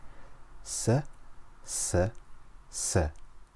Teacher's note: Seen makes a whistling S sound, like the hissing of a snake.